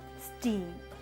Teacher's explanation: English sounds such as p, t, ka, when pronounced in initial position, are aspirated as in p, t, k, as in words like power, 10, kite. But immediately following initial S, they are without aspiration